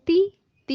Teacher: تا کے اوپر جب کسرہ یعنی زیر آ جائے تو باریک پڑھیں گے، یعنی تو کے نیچے جب زیر آ جائے تو وہ باریک ہوگا، جیسے تو زیر تی، تی یہ دیکھیں یہ باریک ہے نا، اگر تو یہ باریک ہوگا، ویسے یہ موٹا پڑھنا ہے۔